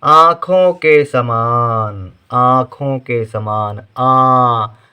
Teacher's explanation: अब यहाँ पर ध्यान देना है, आ यानी बड़ा आ की आवाज़ तो आ रही है, साथ में आ थोड़ी सी नाक से भी आवाज़ आ रही है, उसके लिए चंद्र बिंदु, आ।